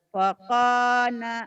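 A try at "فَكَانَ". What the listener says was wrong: Pako, jangan pako, pakana. Nanya pendek.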